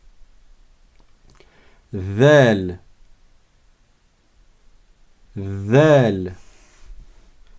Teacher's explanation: la langue elle est pas à l'intérieur de la bouche elle sort de la bouche